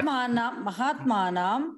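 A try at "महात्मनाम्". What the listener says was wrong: All of us South Indians do this error. In Sanskrit, it is a hraswa there.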